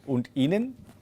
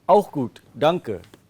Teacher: when you ask me a question, the tone has to rise